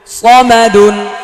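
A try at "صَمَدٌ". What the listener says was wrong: সামাদুন বলা যাবে না, সামাদুন বললে এটা সিন হয়ে যাবে, এটা সদ স স।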